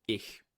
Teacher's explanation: a more frontward, position fricative, like h, as in German ich. Right, that's a palatal fricative